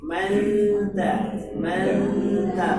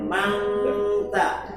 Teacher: Jangan keeng, nun jemput ta.